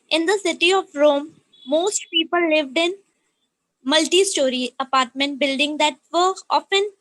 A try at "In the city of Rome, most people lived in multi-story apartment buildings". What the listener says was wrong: please pronounce the words that end with s with a plural. I've said this multiple times. You need to work on the s.